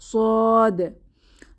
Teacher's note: এটা বলার সময় আমাদের জিহবার গোড়া একটু উঁচু হয়ে ফুলে উঠবে, অর্থাৎ এটি একটি মোটা হরফ বা উঁচু ধ্বনিতে উচ্চারিত হবে।